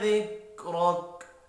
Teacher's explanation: ذکرک میں را زبر کی وجہ سے پر پڑا جائے گا، وقت کی صورت میں کاف ساکن پڑھیں گے۔